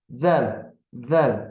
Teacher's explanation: Dilin ucu həm üst dişlərin, həm də alt dişlərin ortasından biraz çölə çıxır. Yəni, dil görsənir. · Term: Pərtək hərf